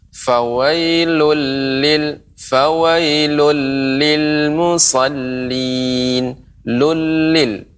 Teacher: Ini tasydidnya Nek, lebih ditambahkan lagi, lebih ditekan.